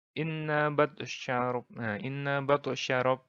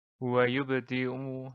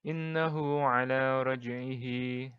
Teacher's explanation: Lalu qalqalah ini ada 2, yaitu qalqalah sura, yaitu qalqalah kecil, dan qalqalah kubro, yaitu qalqalah besar. Nah, qalqalah sugro ini kecil karena pantulannya tidak begitu diperlihatkan.